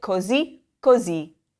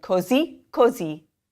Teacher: notice that the accent falls on that word on the last vowel so rise at the end